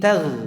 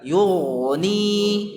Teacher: Karena ghain termasuk huruf isti'la. Jadi tafkhim, tebal ya.